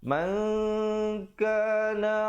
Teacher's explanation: Kaf merupakan huruf ikhfa. Jadi kita sembunyikan nun matinya di belakang kaf dengan dua harakat. Maka kita ready nak sebut kaf tu.